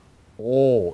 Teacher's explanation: 조금 기억하실 것은 우리가 보통 우리말 하면서 발음하는 O보다는 입을 좀 둥글게 분명하게 발음하는 것이 러시아 O의 특징입니다